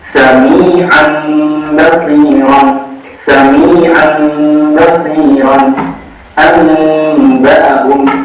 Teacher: Cara membacanya, mengganti nun sukun dengan mim sukun dan disertai gunnah 2 sampai 3 harokat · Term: iqlab